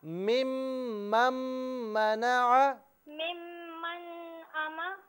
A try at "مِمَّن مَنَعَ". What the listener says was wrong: دیکھیں دوسری مرتبہ جب آپ پڑھ رہی ہیں نا من، تو اسے من نہیں پڑھیں گے بلکہ میم کی آواز نکالیں گے. ممم منع.